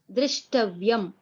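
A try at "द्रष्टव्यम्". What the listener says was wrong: Drashtavyam, not Drishtavyam. Understand? Dr and Dra, the difference.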